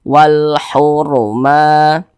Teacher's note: maka dibaca tebal, dibaca tabkhim. Nah, sehingga pangkal lidah kita itu keangkat ke atas atau naik ke atas